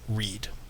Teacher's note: people produce this r by curling their tongue back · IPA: /ɹid/